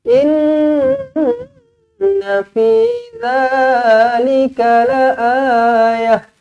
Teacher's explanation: Inna nun sabdu wajibul gunnah, dengungkan 2 harakat. Fi 2 harakat, za 2 harakat ma asli.